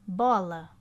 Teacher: forte né na na vogal o do que no lá bola o o tem mais intensidade do que o a então a vogal tônica no caso aqui é a letra o